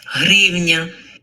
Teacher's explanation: The h isn't very strong. It is saying hrivna.